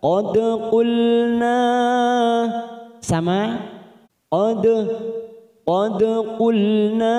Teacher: ada huruf dal sukun qalqalah sugroh karena mati di tengah kalimat, kita pantulkan